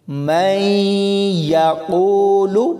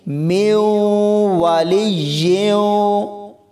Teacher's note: اس میں نون ساکن کے بعد یا ہے جو حروف یرملون میں سے ہے، تو یہاں ادغام ہو رہا ہے